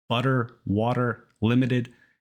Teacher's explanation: It's more like a really fast D, and it's the same sound you might have heard in words like butter and water. Americans make this fast D sound, technically called the alveolar tap, whenever T or D comes between two vowels.